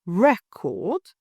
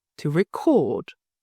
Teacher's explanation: In the first example, the stress is on the first syllable, record. In the second, it shifts to the second syllable, to record. If you stress the wrong syllable, the listener might misunderstand or need a moment to process your meaning.